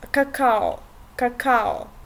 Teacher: you hear o in the end, even if it's not on the emphasis of the word